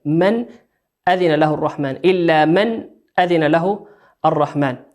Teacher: إلا من نون ساكنة أتت بعدها الهمزة، والهمزة من حروف الإظهار نظهرها كما هي